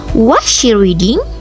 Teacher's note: a rising pitch in a question like, Was she reading? suggests uncertainty